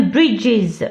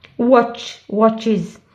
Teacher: ces sons-là, ce sont des sons qu'on appelle sibilant sounds ou bien des sons sifflants. Ils se prononcent avec les frontal teeth. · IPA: /iz/